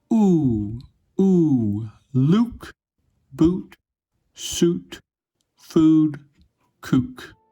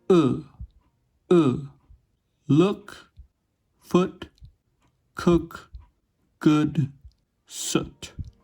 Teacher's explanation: /u/ is produced with very rounded lips, while /ʊ/ is made with moderately rounded lips.